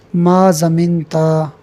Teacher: اب یہاں پر بھی دیکھیے ضمنتا، یہ بھی ضمنتا بغیر الف کے صیغہ واحد مذکر حاضر ہے، مگر چونکہ یہاں تا کے زبر کو اتنا کھینچا گیا ہے کہ آخر میں الف پیدا ہو گیا ہے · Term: الف اشباع